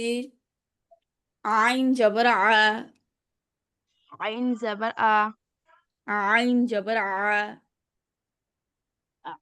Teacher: ভিতর থেকে আসবে, গলার ভিতর থেকে আসবে, একবারে হলকের মাঝখান থেকে।